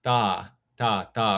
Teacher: if you said da, da, da, rather than ta, there's not that puff of air